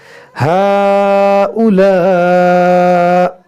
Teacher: हमज़ा पर जब वक्फ़ करेंगे तो ये साकिन होगा तो इसमें झटका होगा